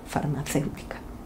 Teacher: farmacéutica tiene cinco sílabas y el acento recae en la antepenúltima sílaba por tanto es una palabra esdrújula y como tal la regla